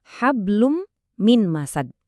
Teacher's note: Suara n dari tanwinnya itu seolah-olah hilang, diganti sama dengungan di huruf mim.